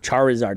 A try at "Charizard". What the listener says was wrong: Just say Charizard. over-enunciate it. You don't need to. You know what it is. Just say Charizard.